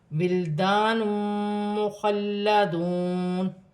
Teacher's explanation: ولدان مخلدون، الف سے پہلے زبر ہے تو الف مدہ بنے گا، اسے ایک الف کی مقدار کھینچ کے پڑھا جائے گا۔ دو پیش کی تنوین کے بعد میم مشدد آ رہی ہے، یہاں پہ ادغام مع الغنہ بھی ہوگا اور ملا کر بھی پڑھا جائے گا اور غنہ بھی کیا جائے گا۔